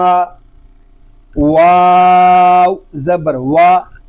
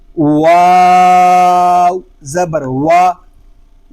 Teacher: واو کو جب ادا کریں گے اول آخر ہونٹوں کو گول کریں گے